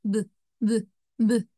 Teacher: you should feel your vocal cords vibrate. That's a voice sound.